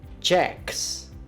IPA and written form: dʒæks (Jack's)